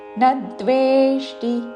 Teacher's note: దాకి వావత్తు, దాని పక్కన మూర్ధన్య షాకి టావత్తు